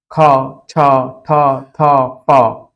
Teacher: ख छ ठ थ प हवा ज्यादा निकलती है इनको बोलने में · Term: महाप्राण